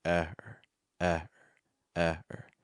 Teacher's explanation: first syllable is stressed. It's higher pitch. It's a little bit longer. And then that second part, it's so fast, right?